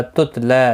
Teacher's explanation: تتلا لام کے اوپر کھڑی زبر ہے، ایک الف کی مقدار کے برابر کھینچ کر پڑھیں گے